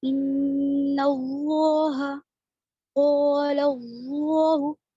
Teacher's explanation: اور نون پر تشدید ہے، غنہ ہوگا